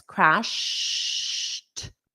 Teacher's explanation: this ed is pronounced as a t because the sound is already at my lips crashed.